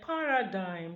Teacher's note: Now in the word paradigm, the same thing happens, because G becomes deleted when it occurs with nasal M at the word final position. Remember we said the word final position. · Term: deletion